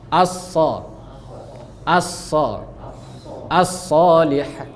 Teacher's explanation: Sod dia nggak ada main bibir.